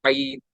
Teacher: आइन अदा होता है मिड ऑफ द थ्रोट, यानी हलक के दरमियान हिस्से से